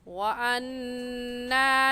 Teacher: نون مشدد ہے اور نون مشدد پر ہمیشہ غنہ ہوتا ہے